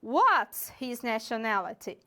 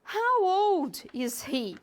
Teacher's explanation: Então, como você pode observar, a entonação cai no final da pergunta. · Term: falling intonation